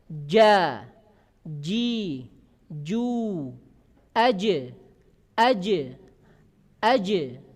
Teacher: lidah bagian tengah nempel kuat ke atas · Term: jim